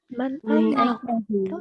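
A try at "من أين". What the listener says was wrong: Min ya, bukan man. Min.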